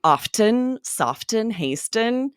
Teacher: all of these were originally pronounced with the T. You could hear the T. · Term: medial T